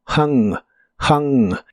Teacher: la H es como la J suave de español pero la u se pronuncia como una a explosiva